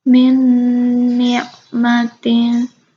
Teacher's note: nun yang pertama tuh seperti sudah jadi satu aja dengan nun yang selanjutnya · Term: idgham mutamathilain